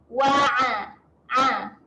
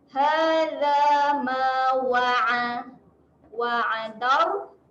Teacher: Bunyi huruf ain ni huruf yang kena tekan dekat tengah kerongkong.